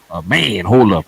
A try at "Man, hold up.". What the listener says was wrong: You said that too fast. That's too fast. Man, hold up. You got to go slower.